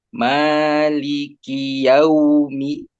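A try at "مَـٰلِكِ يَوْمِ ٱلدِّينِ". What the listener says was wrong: masih masih cepat sempurnakan fathahnya dulu jangan buru-buru monyong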